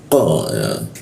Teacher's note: huruf qa di sisi tenggorokan, lidahnya naikkan ke atas sehingga rongga udara terkunci dan tidak ada hembusan udaranya